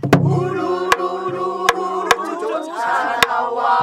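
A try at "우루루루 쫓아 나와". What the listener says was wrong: 우루루루 네 번은 가야지 우루루루 루거루 이렇게 가시다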